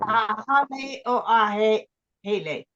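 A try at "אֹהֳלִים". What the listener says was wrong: Oh, ahole. This is an O. So when we have the patah with the shava underneath of it, it produces the O sound. Ahole. Ahole. So O ha lim. So O ha ah ho. So it swaps the vowel sounds. Ohalim ahole.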